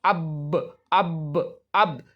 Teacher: جیسے مثال کے طور پر جو با ہے، تو با کا نکلنے کا جو مخرج ہے دونوں ہونٹ ہے